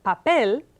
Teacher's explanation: the word papel has stress on the last syllable of the word